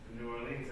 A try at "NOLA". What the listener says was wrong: The Nolan. When you pronounce it, it's one word. It's not. It's Nolans. Nolans. You could say Nola too.